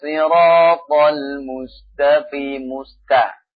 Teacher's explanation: Nah, pada ta-nya, sin-nya perhatikan. Ta-nya juga dibaca tarqiq di sini. Tapi syiddah dengan sifat syiddah yang ada pada ta-nya.